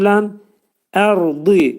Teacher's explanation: ra qalın oxunur. Çünki sükunlu qabaq ə gəlir.